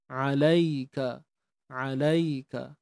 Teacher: huruf ain tengah tengah kerongkong kena sempitkan a, nak bagi bunyi tu a.